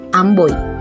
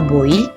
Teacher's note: o i pada kata Amboy di mana pada suku kata Boi vokal o dan vokal I tidak dapat dipisahkan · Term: diftong oi